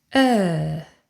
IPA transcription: ɜ: